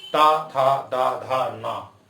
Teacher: ता वर्ग, ये दंत है, जीभ दांतों के बीच आके टकराएगी